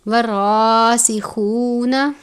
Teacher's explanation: سین حروف صفیریہ میں سے ہے، وہ حروف جن کو ادا کرتے وقت سیٹی کی طرح آواز آنی چاہیے، یعنی سین کو آپ نے سواد یا سا کی طرح نہیں پڑھنا، سیٹی کی آواز آنی چاہیے۔